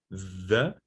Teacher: The voiced dental fricative is the.